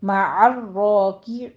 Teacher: را کے اوپر تشدید ہے، پہلے عین کو وسط حلق سے ادا کیجیے، آگے را کے اوپر تشدید ادا کرتے ہوئے اس کو پر پڑھنا ہے، اوپر فتح قائمہ ہے.